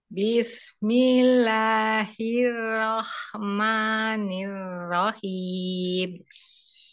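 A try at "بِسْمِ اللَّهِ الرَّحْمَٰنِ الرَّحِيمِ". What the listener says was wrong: Ya, Masya Allah. Lanjut.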